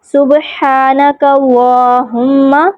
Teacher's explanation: کاف کے اوپر زبر ہے، اس وجہ سے اللہم کا لام پر اور موٹا پڑا جائے گا۔